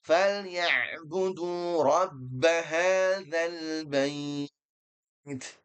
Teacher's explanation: Huruf ain dia punya sifat tawassut atau bainiyah yang dia harus mengalir sedikit. Jangan sampai ditahan. Kalau ditahan menjadi hamzah.